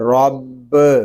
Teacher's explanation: را با زبر رب، را کو پر پڑھیں گے، با مشدد ہے